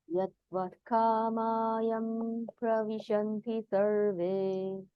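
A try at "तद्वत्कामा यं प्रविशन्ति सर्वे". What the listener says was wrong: tadvat, not yadvat.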